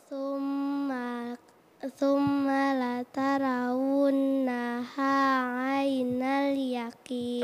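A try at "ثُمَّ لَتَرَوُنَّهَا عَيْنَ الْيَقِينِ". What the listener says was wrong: Masya Allah, bagus sekali.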